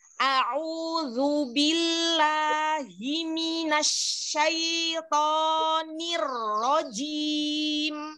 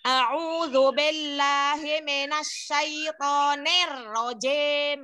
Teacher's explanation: Kalau kasroh menurunkan bibir. Ya, jadi fonemnya seperti huruf I, bukan huruf E.